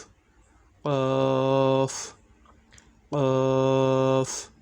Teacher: 4 নম্বর মাখরাজ, জিহ্বার গোড়া তার বরাবর উপরের তালুর সঙ্গে লাগাইয়া 2 নক্তাওয়ালা কফ।